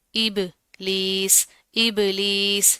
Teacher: با کے اوپر جزم ہے، کلکلا کریں گے